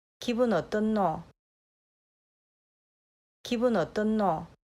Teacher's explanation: Ya at the end is the diphthong vowel. And you can hear in the Busan example that ya becomes o. 어떠냐 becomes 어떠노.